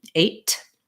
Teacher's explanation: trying saying it with a true t eight big burst of air then try saying it with a really light soft t eight